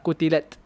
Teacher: hams tu jangan ke arah sin, dia kena ke arah ta